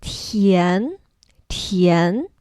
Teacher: Tian, the second tone goes up like tian, tian.